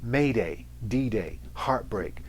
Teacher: words that you can't tell if they are trochaic or iambic they almost sound like they have two strong syllables · There's no weak, strong, strong, weak. They're both equally strong.